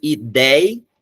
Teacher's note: O ei, já é a sílaba tônica da palavra.